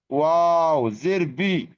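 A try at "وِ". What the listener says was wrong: ওয়াও জের উই, বি নয়, পুরোপুরি বি নয়, উই। ওয়াও জের উই। এই নিচের ঠোঁটটা উপরে দাঁতের আকাশ, উই উই উই উই। ওয়াও জের উই। এই নিচের ঠোঁটটা উপরে দাঁতের আকার সাথে লাগান, উই। ওয়াও জের উই।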